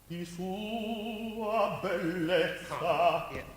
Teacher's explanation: So in Italian, you would say sua. Right, so I would emphasize the U more than the A.